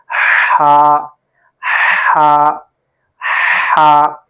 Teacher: حلق کے درمیان والے حصے سے یہ حرف ادا ہوتا ہے